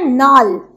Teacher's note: ঝাড়খণ্ডী ভাষার মতন লটা নতে রূপান্তরিত হয়, যেমন লালের জায়গায় নাল, লাল কথাটার জায়গায় নাল।